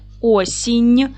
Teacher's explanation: як якщо їх основа закінчується на м'який приголосний звук наприклад Осінь Ми бачимо що закінчується на м'який приголосний нь